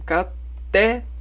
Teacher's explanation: É a última sílaba tônica, ou seja, a última sílaba. Então a oxítona é a última. Não é penúltima. É a última. Última sílaba é a mais alta.